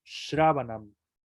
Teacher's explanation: Es palatal la S, o sea, que se pega en el paladar, no directamente como la cerebral, que también se pega en el paladar, pero más hacia atrás.